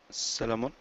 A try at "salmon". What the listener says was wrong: Okay, in this one, the L, on palm, the L is pronounced, but on the L, this second one, the L is not pronounced. So we say salmon. Salmon.